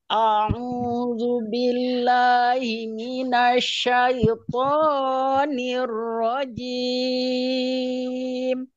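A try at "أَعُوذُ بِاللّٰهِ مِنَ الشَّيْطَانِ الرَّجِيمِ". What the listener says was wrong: Terlalu tinggi, terlalu drastis, Bu. Naiknya terlalu drastis toknya. Tonir rajim tidak ya. Syaitonir rajim. Jadi tonya tidak terlalu naik. Naik cuma tidak terlalu drastis gitu ya. Tonir rajim gitu.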